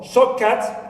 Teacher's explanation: Also for shortcut, here also the ta is followed, influenced by the vela sound ka. That's why it becomes in itself ka, vela ka. Right.